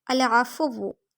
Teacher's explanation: واؤ پہ تشدید ہے اور واؤ کو ہونٹوں کی گلائی سے ادا کریں گے، واؤ پہ حرکت بھی ہے، لمبا نہیں کریں گے۔ · آئین کو حلق کے درمیانی حصے سے پڑھیں گے، آئین کی زبر لمبی نہیں ہوگی۔